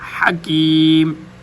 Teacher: حکیم ہا بھی باریک اور گلے کے درمیان سے